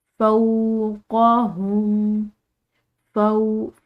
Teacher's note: फ़ा के बाद वाव साकिन आ रही है तो एक अलिफ की मिकदार लंबा अदा किया जाएगा। क़ाफ और हा ये मोटे अदा किए जाएंगे, क़ाफ हल्किया हरूफ के साथ साथ मोटा है, ठीक है।